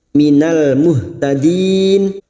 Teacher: lam ta'rif yang bersukun idhar qamariyah. Minal muhtadin, ha sukun jangan tertukar ha.